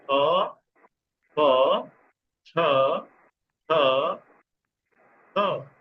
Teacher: ये वो हो गए महाप्राण, मतलब हवा ज्यादा छोड़ी जाती है।